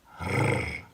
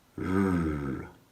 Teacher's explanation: Here's how to do it. The sound r is made with the tip of the tongue vibrating on the roof of the mouth, r, whereas the softer r sound is made by making your tongue kind of U-shaped and producing a softer vibration.